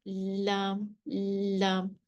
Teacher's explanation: हम उसको बारीक पढ़ते हैं, लाम, लाम, जुबान बिल्कुल फ्लैट होती है, लाम, लाम। टच उन्हीं मसूड़ों से होना है, उन्हीं दांतों से होना है जो हमने पढ़े हैं, सनाया, रुबाई, अन्याब और दवाहिक के मसूड़ों से जब हम जुबान टच होगी तो उस वक्त जो है वो लाम की प्रोनाउंसिएशन होगी, लाम की अदायगी होगी। · जुबान का किनारा अदना हाफा के साथ जब सनाया, रुबाई, अन्याब और दवाहिक के मसूड़ों से लगे तो लाम निकलता है